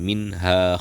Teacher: nun mati ataupun tanwin tadi dibaca jelas tanpa ada dengung dari hidung